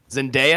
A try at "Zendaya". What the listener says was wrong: Yeah, you were saying it was an I, and there was no I in her name.